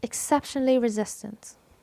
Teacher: Where is the stressed syllable? It is the second syllable, CEP.